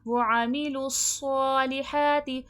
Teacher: صاد حرف مستعلیہ ہے، موٹا حرف ہے اور حرف صفیر ہے، موٹا بھی کرا جائے گا اور سیٹھی کی بھی آواز آئے گی